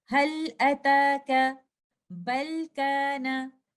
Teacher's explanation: But when the harf bal or hal are followed by any other letter other than letter ra or lam, we recite the lam sakina in the harf bal or in the harf hal clearly, and we do izhar. If we see in this example, the lam sakina is followed by hamza, and in this example, the lam sakina is followed by letter kaf.